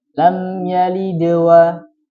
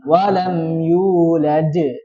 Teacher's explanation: Ada terkumpul dua qalqalah. Yang pertama lam yalid itu sugra. Jadi ringan aja. Lam yalidwa. Kemudian yang kedua agak di kuatkan.